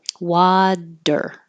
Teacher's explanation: You're pulling your tongue back and curling it back for the R for American English R, water. · technically it is an alveolar flap or tap because you're doing the D very quickly. Water, actually, water, pulling it back for the R.